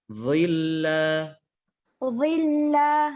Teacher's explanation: hati-hati jangan jadi dhad. Dha lidahnya dikeluarkan.